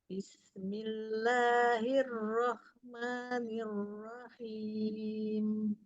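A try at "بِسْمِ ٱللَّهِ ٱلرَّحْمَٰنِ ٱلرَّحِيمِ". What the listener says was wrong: Hamsnya mau lebih terasa lagi Umi.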